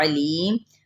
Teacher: عین کو وسط خلق سے ادا کریں